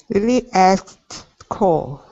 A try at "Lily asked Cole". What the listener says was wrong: Jump over that K. So instead of asked, it's just a T sound.